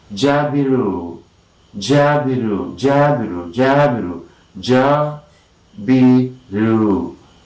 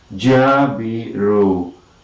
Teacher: Jabiru. And most important syllable is ja. And here you have the primary stress, and you see jabiru.